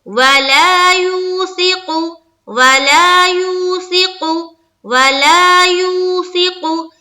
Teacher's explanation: ला को जितना खींच रहे हैं उतना ही यू को भी खींचेंगे, दोनों के मकदार बराबर है · یہاں دیکھیے میں نے بتایا تھا کہ واو ساکن سے پہلے زبر ہو تو واو لین، اور واو ساکن سے پہلے پیش ہو تو واو مدہ. واو مدہ کو ہم 1 الف کے مقدار کے بقدر کھینچ کر پڑھتے ہیں، جبکہ واو لین کو نرمی سے اور جلد ادا کرتے ہیں.